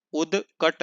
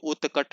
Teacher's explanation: इसमें घोष ध्वनियों को अघोष कर देते हैं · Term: अघोषीकरण